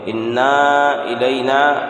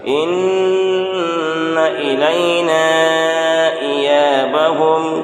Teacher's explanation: یہاں گنہ کے ساتھ بغیر کھینچے پڑھیں گے